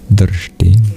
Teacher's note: the R, the S, and the T all are retroflex, which means they have dots under them in the International Alphabet of Sanskrit Transliteration.